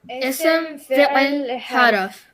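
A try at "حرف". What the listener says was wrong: So that's not haraf, no. Harf.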